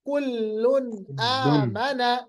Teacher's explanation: دو پیش کے بعد حمزہ آئے گا. حمزہ جو ہے یہ حروف حلقی میں سے ہے. یہاں پر ہوگا اظہار حلقی. اظہار مطلب ظاہر کرنا. دو پیش کو ظاہر کریں گے.